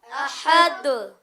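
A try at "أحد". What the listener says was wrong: احد. ہاں اس میں زیادہ یعنی کہ زور نہیں ڈالیں گے. احد ایسے نہیں کریں گے, جلدی. احد.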